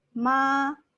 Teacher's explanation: the first tone we have is ma is very flat